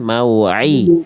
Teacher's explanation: hati-hati ain, jangan jadi hamzah